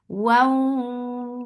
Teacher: Idgham with gunna. So keep the sound in your nose for a longer time. Wa. Wow, circle your lips.